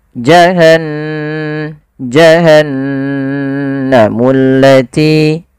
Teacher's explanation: ghunah yaitu membunyikan suara hingga masuk ke rongga hidung kita. Maka suara nunnya dimasukkan ke rongga hidung.